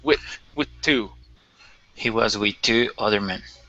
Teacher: this TH isn't as important, and we can pronounce basically a stop TH